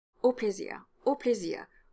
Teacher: Here, the preposition au, au is a closed O, which is the regular pronunciation for that preposition.